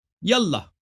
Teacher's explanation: تو یہ کہنا ہوگا الف کا یہ الف جو ہے اللہ کا، یہ الف وصل کے لیے. تو یہ جب یا کہیں گے تو اس کے ساتھ یہ الف کے تلفظ نہیں ہوگا